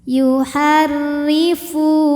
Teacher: dibunyikan secara tarqik karena berbaris kasrah jadi bacanya tipis · berbaris kasrah jadi bacanya tipis yuharrifu Fu hukumnya Mad Thobi'i dahohiri karena ada wau sukun didahului baris damah maka huruf Fa panjang dua harakat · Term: tarqiq